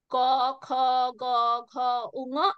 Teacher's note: গাটারাল consonants, যেগুলো গলার পেছন থেকে আওয়াজগুলো বেরোয়, ক, খ, গ, ঘ, উঙ।